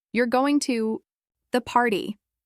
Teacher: If you say it flat, with no rise or fall in your voice, it sounds like you're telling them something